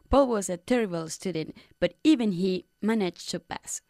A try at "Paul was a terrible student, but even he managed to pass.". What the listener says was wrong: Even he managed to pass. Make the pause a little bit longer.